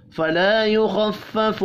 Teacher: खा हुरूफ मुस्तअलिया है, पुर पढ़ेंगे